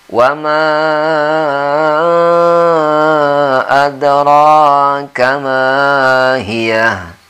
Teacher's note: Wamanya ini 5 harakat, walaupun boleh juga 2, tapi kebanyakan para ahli tajwid ini bersepakat di 5 harakat ya.